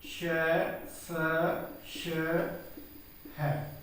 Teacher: संघर्षी, संघर्षी का अर्थ होता है कि जब हवा को जो है संघर्ष के साथ बाहर निकलना पड़ता है, जब हम इनका उच्चारण करेंगे और हवा जो है संघर्ष के साथ बाहर निकलती है तो इसलिए इन्हें संघर्षी व्यंजन कहा जाता है।